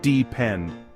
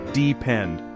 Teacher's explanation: The stress is on the final syllable.